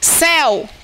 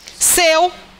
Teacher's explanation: porque o e tem um som aberto se fosse fechado seria como seu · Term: ditongo aberto